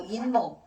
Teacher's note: 니은 소리가 한 개 덧나는 거야.